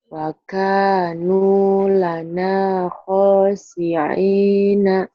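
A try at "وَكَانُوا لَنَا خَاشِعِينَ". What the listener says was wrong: Bagus tapi sini kurang gede. Wa kanu lana khashi'ina. Coba dilatih shinnya ya.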